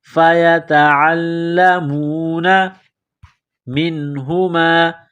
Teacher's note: کو باریک کرنا ہے، عین کو لام کے ساتھ ملانا ہے، لام کے اوپر تشدید ہے، لام کو دبانا ہے، سختی کرنی ہے